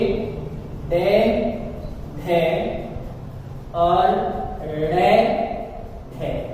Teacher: इनका उच्चारण करते समय जिह्वा मूर्धा को स्पर्श करती है